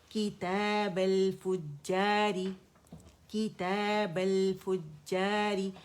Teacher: حمزۃ الوصل روانی میں گر جاتی ہے